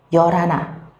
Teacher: Như cô nói thì nhiều khi từ này người Hàn có thể đọc một cách khác nữa, đó là đọc nối chữ R lên khi mà đọc nhanh